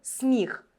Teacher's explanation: і точно пом'якшує звук м але звук с може бути як твердим так і м'яким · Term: подвійна вимова